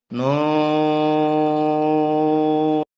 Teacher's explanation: চার আলিফ টানতে হবে জিব্বার আগা তালুতে লাগবে নুন ও এ হরফটি চার আলিফ পরিমাণ লম্বা · 4 আলিফ টানতে হবে, জিহ্বার আগার তালুতে লাগবে।